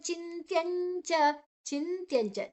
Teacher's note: ಚಿ ಆದ ನಂತರ ನಕಾರ ಯಾಕಂದ್ರೆ ತ ಇದೆ ಮುಂದೆ ಅಕ್ಷರ